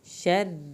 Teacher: را کو پتلا پڑھنا ہے، شد بھی ادا کرنی ہے